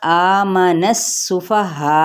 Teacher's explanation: नून की ज़बर को सीन के साथ मिलाते हुए सीन की पेश को लंबा नहीं करेंगे